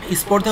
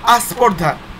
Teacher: স্পর্ধা হয়ে গেল কি? আস্পর্ধা, শুরুতে একটা স্বরধ্বনি আসলো। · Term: আদি স্বরাগম